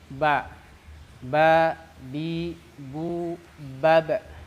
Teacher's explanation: ba itu dari kedua bibir rapat · Nah, bahasa tajwidnya adalah syafatain. Jadi ba itu keluar dari syafatain, dari kedua bibir. Rapat bibirnya.